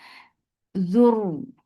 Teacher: The sound is short with Dhamma. Zur for Dhamma circle lips attached to Ra will get sifa of rakhawa, and this vowel is not anymore long because it is attached with Ra now.